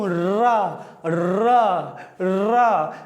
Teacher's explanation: क्या कहते हैं इसको कंपन होता है मेरे दोस्तों। रा, जब मैं जीवा से रा बोल रहा हूं तो मेरी जीभ फंस के आ रही है। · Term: प्रकंपित या लुंठित व्यंजन